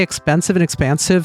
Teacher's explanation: the way I say expensive and expansive sound so similar. It's like I don't actually have a merger between those vowels, but if I talk quickly, it kind of does.